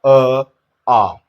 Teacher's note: कंठ से स्वर तंत्रिका जो है कंपन कर रही होंगी। तो यह बोल गए कंठ से अ और आ।